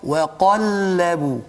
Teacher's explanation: Jadi sepatutnya kena jaga isti'la pada qaf dan istifal pada lam. Waqallabu. Bila sampai lam tu tarik balik nipis.